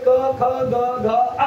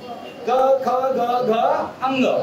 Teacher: कंठवर्ण म्हणजे काय तर आपल्या जिभेच्या मागील भाग मुख्य जिभेचा मागील भाग वरती उचलून कंठाला जाऊन भिडतो · तुमची जीभ वरती मागची जीभ मुख्य जिभेचा मागील भाग वर उचले